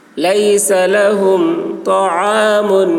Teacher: طا کی آواز موٹی ہوگی، عین حلق سے ادا کریں گے.